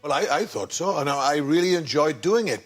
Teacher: there's a slow and deliberate manner of speech to many Welsh accents a lovely up and down motion that makes every vowel sound positively marvelous obviously different corporations has